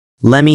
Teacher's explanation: The T disappears. Vowels reduce.